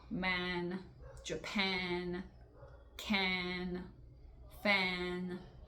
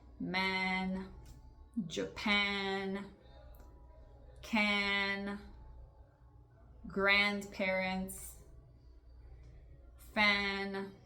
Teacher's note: esse em inglês é um A que você faz colocando sua língua entre a gengiva e os dentes de baixo e também tocando sua língua, o lado da sua língua, os dois lados nos seus dentes superiores. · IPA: /æ/